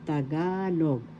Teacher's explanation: the accent is in the second syllable